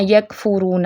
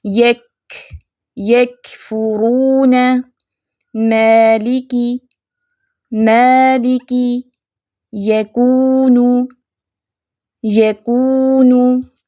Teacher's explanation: کاف ساکن جب ہوتا ہے تو اس پہ کمزور سی آواز تھوڑی سی چلتی ہے